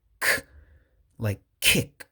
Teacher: So this is a voiceless sound. So we don't do like the hiragana ku. There's no ku.